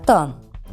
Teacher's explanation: ता का जो उच्चारण स्थान होता है वह होता है हमारा दंतव्य